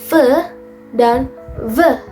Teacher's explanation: Labiodental atau bibir bawah mendekati gigi atas.